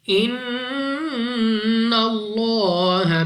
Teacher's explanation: لام آف اللہ سے پہلے حرف پر زبر ہے تو اس لام آف اللہ کو موٹا پڑھیں گے منہ اور آواز کو کھول کر